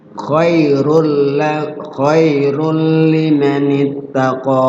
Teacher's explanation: Kemudian cara bacanya diidghamkan tanwinnya ke huruf bila gunnahnya. Bila gunnah tanpa ada gunnah. Artinya jangan berlama-lama di huruf idgham, di huruf lamnya itu. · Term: idgham bila gunnah